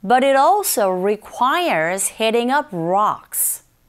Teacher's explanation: But과 it 사이의 t 사운드는 schwa 현상에 의해서 강모음과 양모음 사이의 t 사운드 r 소리로 들리게 되고 · up 부분에 더 힘을 줘서 발음을 하게 되기 때문에 더 잘 들립니다